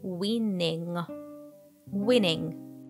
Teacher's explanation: nasal sound so the word winning might be a bit tricky the first n is a true n win and the second one is nasal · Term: nasal sound ng